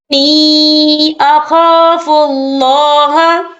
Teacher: یہاں نون مشدد ہے تو یہاں پر غنہ ہوگا، اور نی یہاں پر یا مدہ ہو رہا ہے، یا ساکن ہے، یا ساکن سے پہلے زیر ہے اور اس پہ چھوٹی سی مد بھی ہے، تو ہم یہاں 3 یا 4 قد کے برابر کھینچ کے پڑھیں گے۔